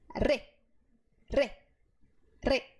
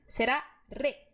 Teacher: Você vai ver que a sua língua, ela se curva e a ponta dela bate no céu da boca. Várias vezes, é um processo rápido. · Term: R vibrante